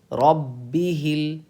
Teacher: اس با پہ قلقلہ نہیں ہوگا کیونکہ یہاں پہ تشدید ہے